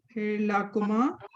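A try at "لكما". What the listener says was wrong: لکما. اگر لا کہتی ہے نا اس کا لام الف ہو گیا.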